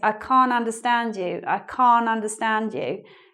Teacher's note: You get really confused because in British English, we don't always say the T, we don't always pronounce the T in this word, can't.